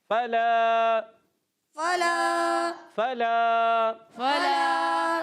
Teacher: فلا میں فا کی ادائیگی ہوتی ہے، فا ادا ہوتا ہے اوپر والے دانتوں کا کنارہ، جب نیچے والے ہونٹ کے تر حصے سے لگتا ہے ادا ہوتا ہے فا. اور لام علی زر لا علی مدہ ہے، لام علی زر لا ایک الف کھینچ کر ادا کرنا ہے.